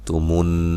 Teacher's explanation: نون مشدد پہ غنہ ضروری ہے۔